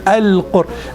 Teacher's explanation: Aywa, that's, but just not this tikrar, not a lot of vibration, just one touch. Just one, Al-Qur.